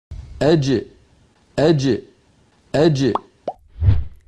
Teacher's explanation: زبان کا درمیانی حصہ اور اوپر تالو کے درمیان سے جیم ادا ہوتی ہے، اور ملاحظہ فرمائیں کہ اس کا مخرج بالکل بند ہو جاتا ہے۔ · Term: جیم کا مخرج